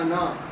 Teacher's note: अगर इसको मिलाकर आगे पढ़ रहे हैं तो अलिफ खत्म हो जाएगा, लेकिन अगर इस पर रुकना पड़ गया तो ये अलिफ साथ में पढ़ा जाएगा, खींचा जाएगा एक अलिफ के बराबर